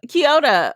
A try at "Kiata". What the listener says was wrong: There's no O in it.